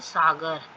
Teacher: दंतव्य श है वो दांत के पास से बोला जाता है वो हल्की ध्वनि है